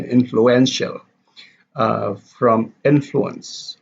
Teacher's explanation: So affixation can be followed with the stress shift, like an influential from influence. Influence, the stress is on influence, the first syllable, and then the adjective you have influential, the third syllable.